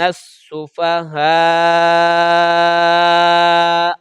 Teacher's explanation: میں نے حمزہ کے اوپر پیش نہیں پڑھی، ہلکا سا جھٹکا لگے گا